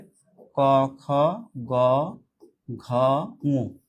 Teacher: তাহলে এটাই কিন্তু ওই যে কণ্ঠমূলীয়, সেটা হচ্ছে ক, খ, গ, ঘ, ঙ। এই 5টা হচ্ছে মূলত জিহ্বামূলীয় ধ্বনি